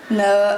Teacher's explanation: We're very nasally and elongated